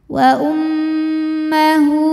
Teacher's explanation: Cara membacanya didengungkan. Jadi bunyi M-nya tahan sampai ada suara masuk hidung kurang lebih 2 harokat. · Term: gunnah musyaddadah